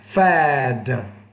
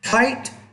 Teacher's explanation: when the D's at the end of the word, which is a voice consonant, you want to make the vowel before it longer.